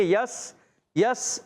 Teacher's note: یا کو سین سے ملائیں گے، یس یس، سیٹی کی آواز آئے گی